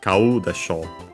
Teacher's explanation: With unaccented verbs, in the other case, when the ro, the sho isn't accented, we accent the final mora of the verb